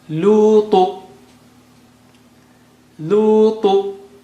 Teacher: Ta is very thick and high.